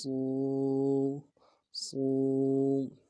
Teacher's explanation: واو مدہ ہے، ایک الف مدار میں کھینچیں گے۔